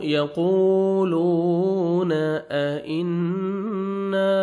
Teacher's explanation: यक़ूलून अइन्ना नून मुशद्दद है, गुन्ना करेंगे, जब मीम शद और नून शद होएगा तो नोज़ में साउंड लेके जाते हैं, गुन्ना करते हैं। अलिफ मद्दा 1 सेकंड आपने नून को खींचना है।